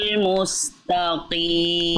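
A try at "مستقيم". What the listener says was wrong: Oh, masih to. Jangan to. Musta.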